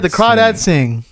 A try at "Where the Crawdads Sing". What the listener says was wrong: Why are you saying it so high? Where the Crawdads. Crawdads sing. Where the Crawdads.